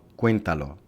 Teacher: el acento prosódico recae sobre la antepenúltima sílaba se clasifica como una palabra esdrújula